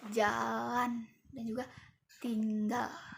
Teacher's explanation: ini merupakan lateral, yaitu udaranya keluar dari samping lidah. Nah, dari samping lidah sini.